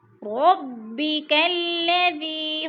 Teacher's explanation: ذی کو کھینچیں گے، یہ مدہ ہے، یا ساکن سے پہلے دال کے نیچے زیر ہے تو یہ مدہ 2 حرکات کے برابر کھینچ کر پڑھنا ہے۔